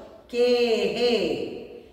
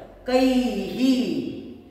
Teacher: विसर्गाचा उच्चार करायचा असेल तर तोंड तसच राहू द्यायचं हवा सोडायची के हे ऐ मध्ये मिळवला ऐ मिळवला कै आता याचा उच्चार